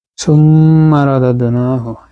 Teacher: এখানে সুম্মা হচ্ছে ওয়াজিব গুন্না, মিম তাসদীদ